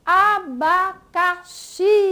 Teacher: Veja que abacaxi, nós temos a sílaba xi, que ela é pronunciada com mais força, com mais intensidade. Então, ela é a sílaba mais forte, ela é a sílaba tônica, isso mesmo.